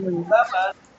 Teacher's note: Two syllables. Stress on the first syllable.